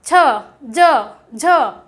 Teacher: जीभ्य का बीच वाला पार्ट तालु को टच करता है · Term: स्पर्श